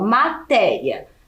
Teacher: E matéria também é uma paroxítona, porque ela tem a penúltima sílaba tônica, mais forte. E se essa sílaba, né, que é a penúltima, é a mais forte e ela termina em ditongo, logo ela tem que ser acentuada.